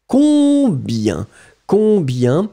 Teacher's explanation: You don't hear any M or any N at all.